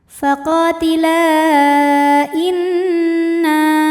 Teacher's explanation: Mad thobi'inya adalah alif didahului fathah pada kata faqotila, sedangkan hamzahnya i pada kata inna, maka lam dipanjangkan boleh empat boleh lima harokat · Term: mad jaiz munfashil